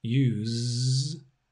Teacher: it's a voiced z as a verb